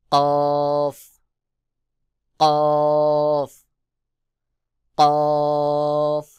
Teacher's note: জিহ্বার গোড়া তার বরাবর উপরে তালুর সঙ্গে লাগাইয়া কফ উচ্চারণ হবে